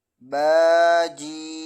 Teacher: با کو 1 الف کے برابر کھینچنا ہے اور جیم کو 5 الف کے برابر